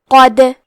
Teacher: کلمت قد میں حرف القاف کی ادائیگی زبان کے جڑ اور تالو کے نرم حصے سے ہے. قاف حروف التفخیم میں سے ہے تو ہم یہ حرف کو موٹی آواز میں پڑھیں گے.